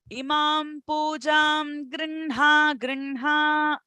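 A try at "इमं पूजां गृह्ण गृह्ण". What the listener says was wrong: Okay, so you have to remember your phonetic rules. Not Pujam, it is Pujan, because Ga is coming, right? Pujangra, Nga is what is used, okay?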